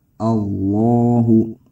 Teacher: dibaca tebal pangkal lidah naik ke arah langit-langit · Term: tafkhim